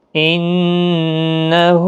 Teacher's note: نون مشدد پر غنہ ہوگا، اور ہا کے اوپر الٹا پیش ہے، 1 الف کی مقدار کے برابر کھینچیں